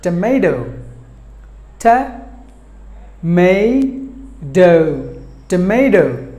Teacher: But the Americans will pronounce this word as tomato, ta-ma-do, tomato. The T will be pronounced by the Americans as D, which is called a flap T · The T will be pronounced by the Americans as D, which is called a flap T, because there's a very simple rule they apply there. If they find the letter T in between the vowels, the T is pronounced like the D by the Americans.